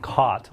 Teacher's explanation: the word cot like the thing you sleep on and caught like I got caught by the cops or something like that those words merged